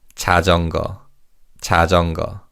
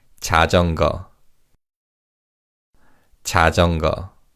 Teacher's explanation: in fast speech, the 니은 받침 in the second syllable sounds more like an 이응 받침